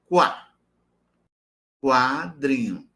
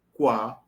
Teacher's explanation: Posição do véu palatino, levantado, porque o som é oral. · Porque esse som é labializado. Pessoal, como é labializado? Eu arredondo os lábios. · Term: oclusiva velada esvaziada labializada